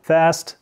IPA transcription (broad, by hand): fæst